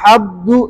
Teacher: अगर आप नाक में नहीं ले जाएंगे आवाज को तो हब्दू, ये बा की तरह पढ़ा जाएगा